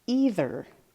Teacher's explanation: My tongue touched the top teeth in the middle of that word, so I know there's going to be a TH